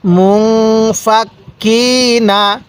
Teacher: তাহলে নুন সাকিনের পরে ইকফার 15টি হরফ থেকে কোনো একটি হরফ যদি এই নুন সাকিনের পরে থাকে তাহলে ওই নুন সাকিনটা আমরা গুন্নাহ করে পড়ব। যেমন এখানে নুন সাকিনের পরে ফাটি হলো ইকফার হরফ, এজন্য আমরা এই নুন সাকিনটা গুন্নাহ করব।